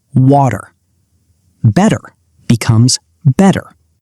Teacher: In American English, when a T or double T is sitting comfortably between 2 vowel sounds, it relaxes. It changes from a sharp, crisp T to a soft, quick D sound. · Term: The flap T